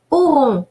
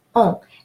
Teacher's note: AU rule of pronunciation is pronounced O, and ON is pronounced nasal O